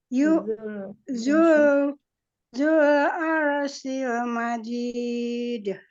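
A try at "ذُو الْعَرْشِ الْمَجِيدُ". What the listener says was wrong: Masih kurang huruf shin-nya. Arshi. Shi. Coba lagi.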